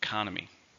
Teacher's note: There are 4 syllables. Stress is on the second syllable.